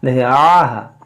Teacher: یہاں پر دیکھیں عین ہے اور ہا ہے, عین ہا زبر آہ, دیکھیں آہ, عین بھی ادا ہو اور ہا بھی ادا ہو